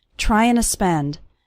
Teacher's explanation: the word to just becomes a little sound at the end of trying